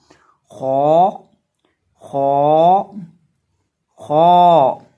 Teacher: अब जब हम खौ को पढ़ेंगे तो खौ को हम पढ़ेंगे मोटा करके, क्योंकि ये हरूफ मुस्तालिया में से है।